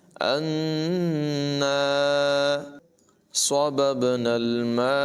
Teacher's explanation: یہاں پر با میں قلقلہ ہوگا، یعنی با کی آواز کو خوب ظاہر کر کے زور لگا کے پڑھیں گے